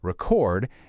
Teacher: If we stress the first syllable, record, it's a noun, you know, like a vinyl record. But, if we stress the second syllable, record, it's a verb, the action of recording a video.